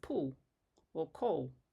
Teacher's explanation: But for instance, the L that we use at the beginning of a word like is different from the one, at least in Western Australia where I live, at the end of pool or coal. Almost sounds like a W. So that's a dark L. And the one at the beginning is a light L.